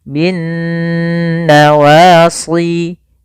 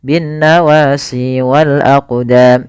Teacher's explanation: Cara membacanya yaitu suara nunnya kita tahan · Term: bacaan gunnah